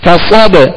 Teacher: صاد کو پر اور موٹا پڑھیں گے، صاد میں سیٹی کی آواز پیدا کریں گے